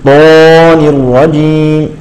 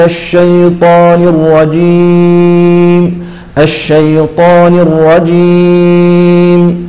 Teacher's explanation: هذه الطاء مفخمة لكن لا نبالغ في تفخيمها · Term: تفخم بدون تكلف